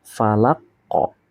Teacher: Di sini ada qalqalah kubro ya. di mana di akhir kalimat kemudian dipantulkan, ditekan lalu dipantulkan